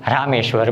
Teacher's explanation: આમ રામ અને ઈશ્વર આ બંને શબ્દ જ્યારે જોડાય છે ત્યારે એનું ઉચ્ચારણ એ બને છે. એટલે કે અ અને દીર્ઘ ઈ આ બંને જ્યારે એકબીજાની સાથે સંયુક્ત થાય છે, બંને એકબીજાની સાથે ભળે છે ત્યારે એનો ઉચ્ચાર એ બને છે.